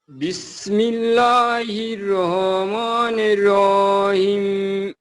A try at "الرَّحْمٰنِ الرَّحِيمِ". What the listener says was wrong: এই যে হাটা গলার ভেতর থেকে বলতে হবে, রহমানির রহিম। হ্যাঁ, অনেকটা হয়েছে, বাট আরেকটু চাপ, রহ, এভাবে রহ, রহমানির